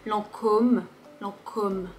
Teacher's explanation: Ici, Lancôme, c'est uniquement pour faire un peu plus prestigieux, plus élégant. Il faut juste prononcer le O de façon plus ronde.